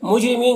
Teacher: جیم میں قلقلہ ہوگا، را کو باریک پڑھیں گے۔ مین یہاں پر وقف کریں گے تو نون کا زبر سکون سے بدل جائے گا تو مد عارض وقفی ہوگا، اس طرح سے پڑھیں گے۔